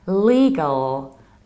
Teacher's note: in the American accent, we have double dark L